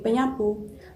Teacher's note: fonem s atau es pada kata sapu itu diluluhkan dan disenyawakan dengan fonem nasal ny atau nyah yang pada prefiks me itu. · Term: peluluhan fonem